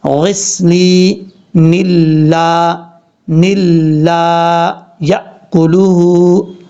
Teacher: اگر آپ سٹاپ نہیں کرنا چاہتے، ملا کے پڑھنا چاہتے ہیں تو پھر نون کو لام سے کنیکٹ کریں گے · جب ملا کے پڑھیں گے تو یہاں پہ پھر ادغام یرملون ہوگا بغیر غننے والا